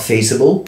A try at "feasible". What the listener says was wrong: I thought you were like crossing feasible and feces.